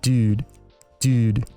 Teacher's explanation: Californian U is slowly shifting towards the front of the mouth. · Younger speakers tend to pronounce the U closer to the front, while older speakers pronounce the U closer to the back.